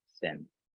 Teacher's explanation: You don't really use your voice box for that TH, thin, just the tip of your lips.